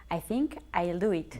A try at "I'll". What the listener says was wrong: Bien, I'll se pronuncia I'll y no al. ¿Ok? No I'll, sino I'll. With the Y sound in the middle. I'll.